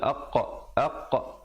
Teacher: Ada pantulan di situ. Qaf bertanda mati.